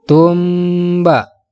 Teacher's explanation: cara membacanya huruf mim nya harus didengungkan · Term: ikhfa syafawi